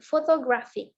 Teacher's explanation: Jadi untuk yang kata photographic itu kita berikan penekanannya yang ketiga